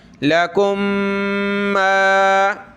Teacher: ہا پیش ہو، واو لام زبر واللام زبر لا، واللہ ذال یا زیر ذی، هو الذی خلق لکم ما، یعنی میم ایک جیسی ہیں، ایک مخرج ہے، ایک جنس ہے، تو میم کو میم میں پلس کر دیں گے، ایک ہی میم پڑھیں گے، ناک میں آواز پیدا کریں گے